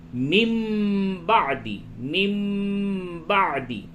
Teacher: اس جگہ پہ قلب ہوگا، یعنی نون کی آواز کو میم سے تبدیل کر کے پڑھیں گے. میم نون زیر من ہوتا ہے، من بعدی، لیکن اس جگہ پہ بولیں گے من بعدی، من بعدی.